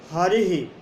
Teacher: हरिः में विसर्ग का आश्रय स्थल इकार है और इसका उच्चारण स्थान, इकार का उच्चारण स्थान इचु यशानाम तालु है। तो यहाँ विसर्ग का उच्चारण स्थान कंठ और तालु होता है।